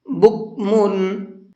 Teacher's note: بکمن، یہاں میم کے اوپر تنوین ہے اور تنوین کے بعد میں عین ہے، عین اظہار کے حرفوں میں سے ہے، تو یہاں تنوین کے اندر اظہار کریں گے، غنہ اخفا نہیں کرنا ہے۔